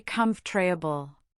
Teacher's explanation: The or sound often vanishes.